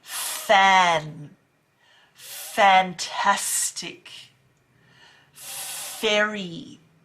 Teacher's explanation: top teeth bottom lip breathe out well done that is the perfect f sound